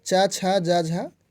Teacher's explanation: यदि तालु की बात की जाए तो च वर्ग, च छ ज झ, यह तालु से हो जाता है। तालु से उच्चारण स्थान होता है च वर्ग का।